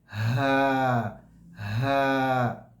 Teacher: उर्दू ज़बान में हा की आवाज़ जो अदा होती है वो मुंह से अदा होती है, मतलब जो मौत कैविटी है यहाँ से आवाज़ आती है। अरबी ज़बान में जो हा की आवाज़ है वो जहाँ से हमज़ा की आवाज़ है वहीं से हा की भी आवाज़ है। हा हा, इसमें हवा बाहर निकल रही है, आवाज़ आ रही है हा हा।